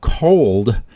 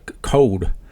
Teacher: One that I've actually noticed, and maybe this can be discussion in Discord, is cold, which I usually pronounce the L, but I've in the Ohio Valley, and kind of in Appalachia, code. It's that you actually hear that L sound elided in that word